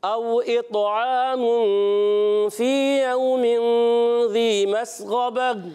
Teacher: मस्ग़बा, गैन को मोटा रखना है